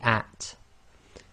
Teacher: you have to let a bit of air through the teeth, so you say at.